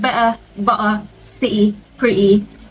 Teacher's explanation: some accents, like the Cockney accent, they don't pronounce the T at all.